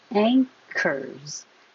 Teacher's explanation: This doesn't look like there's an NG, but your tongue is going to the back high.